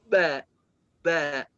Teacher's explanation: حرف الباء بيخرج من انطباق الشفتين مع بعضهما.